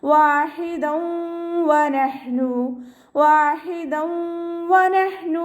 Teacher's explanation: തെൻവീനിലുള്ള നൂനിൻ്റെ സൗണ്ടിനെ വാവിലേക്ക് ലയിപ്പിച്ച് ഒന്നയോട് കൂടി ഒതി കൊടുക്കുക. ലയിപ്പിക്കും ചെയ്യുക, അതോടൊപ്പം തന്നെ നന്നായിട്ട് മണിക്കും ചെയ്യുക കേട്ടോ. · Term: ഇദാം ബിഗുന്ന